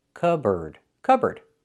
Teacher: It's pronounced cupboard. So, the P is silent.